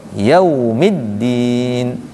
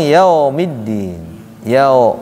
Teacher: w itu monyong mulutnya biar bunyinya u karena kalau tidak dimonyongkan bunyinya o nantinya Maliki yau langsung Monyong yaumiddin karena enggak monyong yaumiddin Yao nantinya